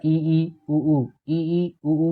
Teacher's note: ई ऊ बोलेंगे तो मुंह ज्यादा नहीं खुलेगा, लगभग बंद सा ही रहता है, हवा इतनी बाहर नहीं आ पाती। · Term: संवृत स्वर